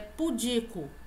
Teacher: a palavra não é proparoxítona, a sílaba tônica não é esse pu, a sílaba tônica é di, então a pronúncia correta é pudico.